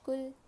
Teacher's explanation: لام زبان کے کنارے کو سائڈ کے داڑوں کو لگانے سے ادا ہوتا ہے. لام کو باریک پڑھیں گے.